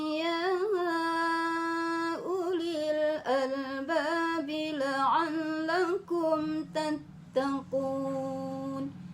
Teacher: Ya ulil, bukan u-nya yang panjang, tapi ya-nya yang panjang.